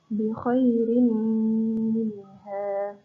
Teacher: ada nun mati bertemu dengan huruf mim, maka dibaca panjang 2 harokat atau dibaca berdengung gitu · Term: idgham bi gunnah